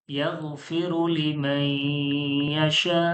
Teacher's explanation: এটা কি হবে ঈদগামে ঈদগামে ইয়ারমালুনের কায়দা, ইয়ারমালুনের। ইয়ার মালুনের কায়দা ঈদগামে ইয়ার মালুনের কায়দা গুন্নাহর সঙ্গে মিলিয়ে পড়তে হবে